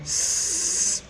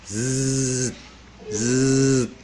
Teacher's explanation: When you say the word Z, Z, you can feel the vibration in your throat